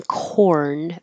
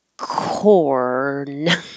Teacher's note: you go too quickly you won't hear the r sound so hold it in the r position for a longer duration than you think you need to so the r can be heard